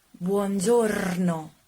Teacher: Use a very strong R. Roll your R.